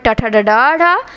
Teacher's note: ट वर्ग का मुर्धा से